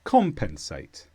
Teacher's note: it's a verb with the stress on com